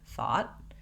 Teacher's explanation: if you don't hear the t sound you still need to mark it by closing off the air quickly